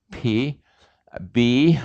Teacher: So take your M sound here and open it so that it has an opening here to it, and your M, if you open it, your bilabial stop is your P or B sound